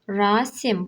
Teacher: burada da xitab rolunda çıxış elədiyinə görə vurğu əvvələ düşür